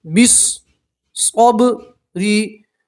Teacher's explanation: الف اور لام نہیں پڑھیں گے. با کو سیدھا صاد سے ملائیں گے